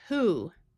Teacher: Here you might notice the word who, where the O has the oo sound and the W is silent.